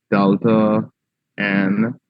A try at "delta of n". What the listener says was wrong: I don't know why you all don't pronounce the of Delta of n